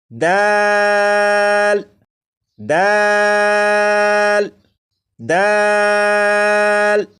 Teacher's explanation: دال کو 3 الف کے برابر کھینچ کر پڑھیں گے